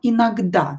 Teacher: Inagda o not stressed is pronounced as a.